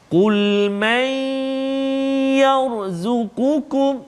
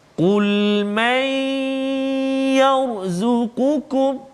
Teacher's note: Yang ni kita tengok contoh nun mati pula bertemu dengan ya. Maka kita masukkan bunyi nun ke dalam ya dengan dengung 2 harakat. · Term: idgham ma'al ghunnah